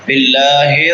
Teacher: لفظ اللہ باریک ہوگا کیونکہ لفظ اللہ سے پہلے زیر ہے